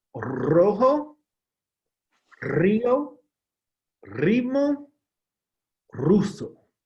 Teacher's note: the R beginning the word that will produce the rolling R sound